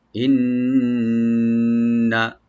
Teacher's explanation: নুন মুসাদ্দাদ এখানে ডাবল ওয়াজিব গুণনা করবেন, একালি পরিমাণ গুণনা, কিন্তু টানবেন না